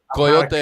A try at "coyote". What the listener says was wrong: Where's the O in coyote?